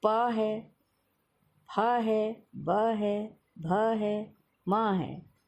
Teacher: इन सबको बोलते समय आपके होंठ आपस में मिलते हैं। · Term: ओष्ठ वाले व्यंजन